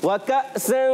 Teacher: इख्फा में गुन्ना होता है और नून को छुपा कर गुन्ना होता है